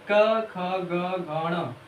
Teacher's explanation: कंठ से इसका उच्चारण होता है।